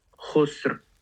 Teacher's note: The ra is going to be heavy. The sin is going to be light.